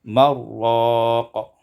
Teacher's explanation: wa idghamun nun fil ra, dan idghamkan nun pada ra jadi marraq